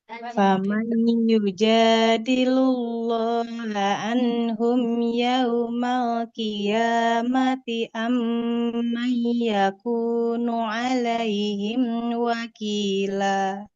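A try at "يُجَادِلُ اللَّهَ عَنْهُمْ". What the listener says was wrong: Coba Ibu ya, boleh diulang di anhum. Ainnya jangan kayak Hamzah Ibu. Huruf ainnya di tengah tenggorokan.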